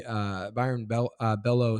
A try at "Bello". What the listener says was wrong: Yeah, but you said the last name wrong. Bayo, because it's double L, but it's Bayo.